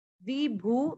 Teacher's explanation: वी की मात्रा छोटी है, भू वापस बड़ी मात्रा